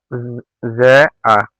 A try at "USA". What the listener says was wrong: ওটা জে হবে না রে ভাই, ওটা এস, ওটা USA।